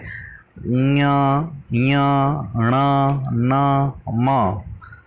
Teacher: इसमें जो ध्वनि होती है वो नाक से भी बाहर की ओर निकलती है, तो इसलिए इनको नासिक के वर्ण भी हम कहते हैं।